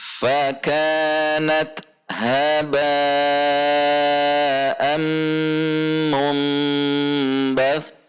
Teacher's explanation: Mum harus panjang dan dinikmati gunnahnya, harus ke hidung gunnah.